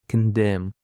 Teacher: It is of 2 syllables, and the stress is on the second syllable.